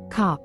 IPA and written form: kɑp (Cop)